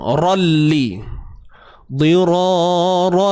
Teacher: Apabila tanwin bertemu lam akan adanya unsur idgham. Idgham ni masukkan bunyi tanwin ke dalam lam.